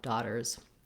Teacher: When you add the letter S, it's just going to add the Z sound if you make it plural, daughters.